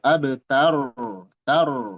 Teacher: Abtar banya qalqalah, rnya tebal.